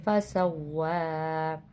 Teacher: جہاں پہ وقف ہو رہا ہے وہاں پہ کھڑی زبر کی علامت ہے، اس لیے تو کھینچ کے پڑھیں گے